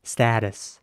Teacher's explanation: so again with an a sound and a very soft T